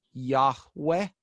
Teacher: like a hard H and a W sound rather than a V sound